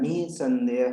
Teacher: नी के बाद में ह का उच्चारण होता है